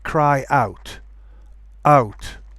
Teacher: Okay, I'm putting a glottal stop, and that will avoid any kind of linking sound.